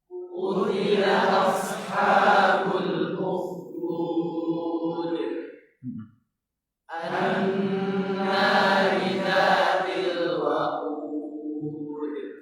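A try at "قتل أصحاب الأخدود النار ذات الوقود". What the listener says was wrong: Tahan dulu gunnahnya. Anna.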